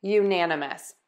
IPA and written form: juˈnænəməs (unanimous)